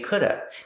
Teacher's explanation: Sometimes you'll hear coulda. People will not pronounce the v sound at the end, could've. They just say coulda.